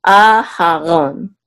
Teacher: So the accent is on the second syllable.